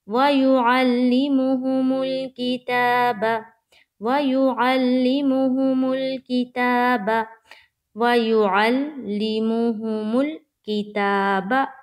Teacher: تا میں ایک الف کی مقدار کے باقدر کھینچیں گے